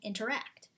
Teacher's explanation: two unstressed syllables followed by one stressed syllable